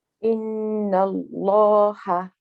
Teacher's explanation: The lam in the name of Allah, both lams are heavy.